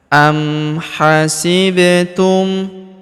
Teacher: huruf ba berharokat sukun kita pantulkan atau kita qalqalahkan. Am hasibtum an tadkhulul, huruf nun sukun bertemu huruf ta, maka nun sukunnya melebur ke huruf ta.